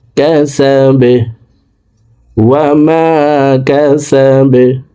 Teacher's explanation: বা কলকলার হরফ নিচের দিকে ধাবিত করে বাকে সাকিন করে ফেলবো। ওয়াকফের ক্ষেত্রে এই বাকে সাকিন করতে হবে।